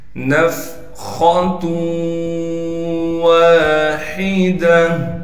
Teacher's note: خا کو موٹا کر کے پڑھیں گے، خا موٹے حروف میں سے ہے۔ · ہا کو صاف کر کے گلے سے نکالنا ہے، گول تا وقف کی حالت میں ہا بن جائے گی۔